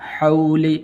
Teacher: واو حروف لین میں سے ہے، لمبا نہیں کریں گے